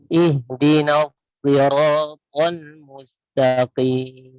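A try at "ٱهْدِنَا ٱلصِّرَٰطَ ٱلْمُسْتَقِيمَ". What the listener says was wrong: Ya, mustaqim, jangan ada mat ya. Kita langsung. Ihdinas siratal mustaqim. Al-mustaqim.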